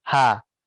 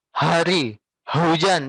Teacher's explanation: Jangan dikeluarkan dari dada, tapi dikeluarkannya hanya dari tenggorokannya saja.